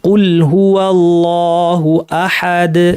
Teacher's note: যেমন কুল হুয়াল্লাহু আহাদুন ছিল, আমরা আহাদ বলে সুকুন দিয়ে আমরা থামবো, এবং দালে সুকুন আসলে যেহেতু কলকলা হয় কলকলা করি থামবো, অর্থাৎ সুকুন থাকলে যে নিয়ম হয় সেই নিয়ম করে আমরা থামবো।